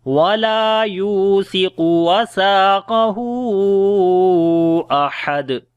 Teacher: دال کے اوپر جو ہے وہ قلقلہ کیا جائے گا